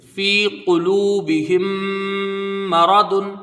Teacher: یہاں میم مشدد ہے، میم کا میم میں ادغام شفوی ہوگا، غنہ کر کے پڑھا جائے گا · ادغام شفوی ہوگا، غنہ کر کے پڑھا جائے گا، میم کو را کو جلدی پڑھیں گے، زبر ہے، را کو پر پڑھا جائے گا ، ضاد کے اوپر دو پیش کی تنوین ہے، فی قلوبہم